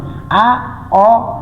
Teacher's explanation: ओ उच्चारण गर्दा खेरि के त अलिकति ओस्टलाई चै के बनाउनु पर्छ रे गोलो बनाएर र उच्चारण गर्नु पर्दछ · पर्यो। आ भन्दा चा चै कम खोलेर चाहिँ अ उच्चारण गरिन्छ अ भन्दा चै कम खोलेर ओ उच्चारण गरिन्छ